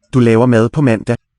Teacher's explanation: Good old stop D there after the N